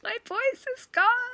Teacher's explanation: Because my vocal folds are vibrating irregularly. And it's causing a breathy quality because they can't close all the way.